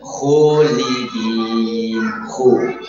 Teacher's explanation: Ini alifnya tidak sempurna, ada campuran sedikit suara waw.